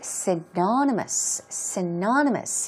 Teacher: Stress goes right there on the second syllable.